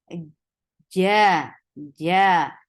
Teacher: don't give the ch sound in jim. There is no ch in jim.